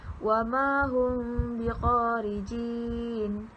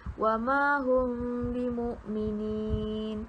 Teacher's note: Cara bacaan ikhfa syafawi adalah dengan meringankan bibir semasa menyebut mim sukun dengan tidak merapatkan bibir sepenuhnya.